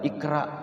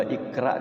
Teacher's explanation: kalau qafnya itu diwaqaf atau disukunkan maka ia bacanya dengan Qalqalah